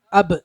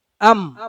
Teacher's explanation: ബാവും മീമും ഉച്ചരിക്കുന്ന ഉച്ചാരണ സ്ഥലം ഒന്ന് തന്നെയാണ്. അം അബ് രണ്ട് ഉച്ചരിക്കുന്ന ഓടുന്ന രണ്ട് ചുണ്ടുകൾ ചേർത്താണ് രണ്ടക്ഷരം ഉച്ചരിക്കുന്നത്.